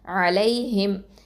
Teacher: சுகூன் லை அலை ஹா கசரா மீம் சுகூன் ஹிம் அலைஹிம் இந்த இடத்துல ஐன் வந்து எங்க இருந்து வருது வசத்துல் ஹல்க்ல இருந்து வரும் ஓகேவா நடுத்தொண்டையில இருந்து வரணும் அடுத்தது லாம் வந்து ஹபத்துலிசான் யா வந்து இது வந்து என்னன்னா லீன் ஓகே